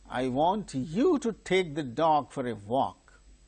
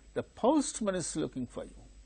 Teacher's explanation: in such ordinary sentences what happens the pitch falls from higher level to lower level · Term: falling tone